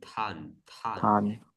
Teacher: And the TH means like aspirated T.